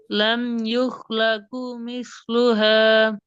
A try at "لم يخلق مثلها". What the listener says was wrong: நீட்டப்படாதே. லம் யுஹ்லகு. காஃப் நீட்டப்படுதே.